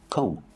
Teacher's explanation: remember the B is silent don't pronounce a B